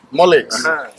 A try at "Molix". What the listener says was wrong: Molish. Molish is what the indigenous pronounce the X.